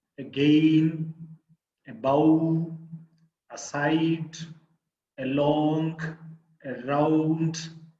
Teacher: in all these words the second syllable is the stress syllable